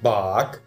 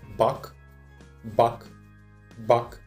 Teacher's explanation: В отличие от русского А, мы не загоняем язык назад, мы его вставляем посредине рта, но чуть-чуть приподнимаем. Соответственно, горло тоже особо сильно не напрягается, как в русском языке. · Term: краткий А